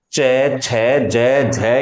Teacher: जिह्वा स्पष्ट रूप से तालु को बहुत ज्यादा स्पर्श करती है, या यूं कहें कि चिपक ही जाती है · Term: तालव्य